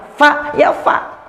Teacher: ujung gigi seri atas bertemu dengan perut bibir bawah